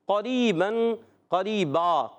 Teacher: قریباً قریبا، قریباً کو وقف کرنے میں قریبا پڑھتے ہیں، تو را یا زری یا مدہ ہے، ایک الف کھینچنا ہے، اور را کے نیچے زیر ہے، باریک پڑھیں گے، دو زبر کی تنوین کو الف سے بدل دیں گے، اس کو کہتے ہیں وقف بالابدال مال الف۔